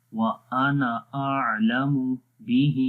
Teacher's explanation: کسی کو بھی لمبا نہیں کریں گے، خالی آخر میں ہا کو لمبا کریں گے